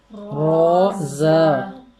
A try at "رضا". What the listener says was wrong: آواز آپ نے نہ آدھی کی نہ پوری کی، درمیان میں کر دی. روزہ.